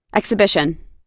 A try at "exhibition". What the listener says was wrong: Exhibition. Yes, okay, exhibition. We don't pronounce the letter H, right? We don't pronounce the letter H. Okay, so this one is exhibition, exhibition.